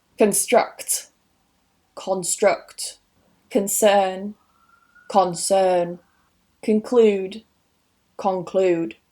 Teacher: So that schwa at the beginning of the con actually changes to an ɒ sound up north